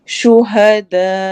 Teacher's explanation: stop کریں گے تو جھٹکا دیں گے اور مد متصل کریں گے